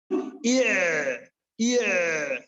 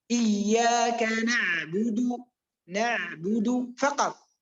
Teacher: الحروف البينية صوتها يجري جريانا ناقصا وينقطع، يجري ثم ينقطع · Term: حرف بيني